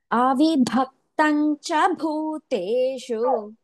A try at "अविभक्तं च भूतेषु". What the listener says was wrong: Avibhakta, no, you said avibhakti.